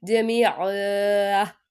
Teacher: جمیعن، یا ساکن سے پہلے زیر ہے، یہاں پہ یا مدہ ہوگا، ٹھیک ہے۔ دو زبر کو وقف میں الف سے بدل دیں گے